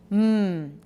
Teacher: so starting with bilabial nasal just make the sound by itself everybody go mmm good voiceless